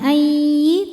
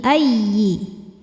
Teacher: ya tasydid dibaca dengan naber yaitu menaikkan intonasi suara ya. Jadi jangan ditahan, bukan ayyi tapi ayyi.